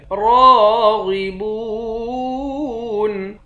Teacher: را اور غین دونوں کو موٹا پڑھیں گے · با کو واو کے ساتھ ملا کر واو کو بھی ایک الف کی مقدار کھینچ کر پڑھیں گے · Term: حروف مدہ